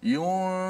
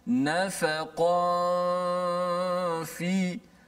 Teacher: Dengung dulu. Habis tempoh dengung dipanjangkan, baru kita menekan betul-betul makhraj fa. · Nun tu mana? Nun dah disembunyikan pada makhraj fa tu. Nun kekalkan pada gunnah saja di khayshum, di hidung. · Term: ikhfa hakiki